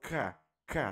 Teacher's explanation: Tá vendo que sua língua tá lá no céu da boca? K. Mas não é no na parte dura do céu da boca, na parte mole, que nós chamamos de alvéulo. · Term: velar